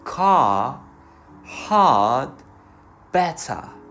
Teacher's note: On the other hand in many accents of British and Australian language the R is not pronounced before consonants and at the end of the words